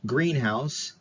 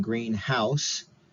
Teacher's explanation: Stress tends to be more prominent on the first member of the compound rather than the second.